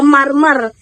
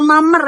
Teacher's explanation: Kata marmer itu kadang diucapkan mamer ya. Jadi nggak ada R-nya ya dalam percakapan cepat. Untuk menghindari pengulangan bunyi R ya, sering banget diucapkan kayak mamer gitu kan, harusnya kan marmer ya.